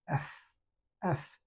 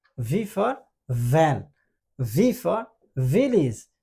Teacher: এটা মোর always এফ এর মতোই উচ্চারণ হয়। এফটা হচ্ছে ভয়েসলেস মানে ঠোঁট দিয়ে উৎপন্ন হয়, আর ভিটা হচ্ছে ভোকাল কর্ড থেকে আসে, but mouth position ভি and এফ same, যেমন এফ এফ, আর ভি এর ক্ষেত্রে ভোকাল কর্ড থেকে আসবে।